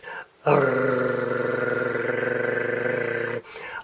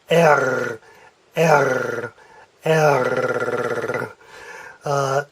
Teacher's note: you have to vibrate your uvula way back in the back of your throat. So it's not a tongue roll like some Latin languages do. · It is a very guttural back of the throat roll of your uvula.